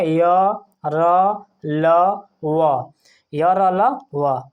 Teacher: जीभ मुंह के किसी भाग को स्पर्श नहीं करती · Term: अर्धस्वर, अंतस्थ व्यंजन